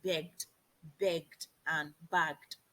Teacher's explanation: In the case of D, when the ED comes after a voiced consonant, it becomes D.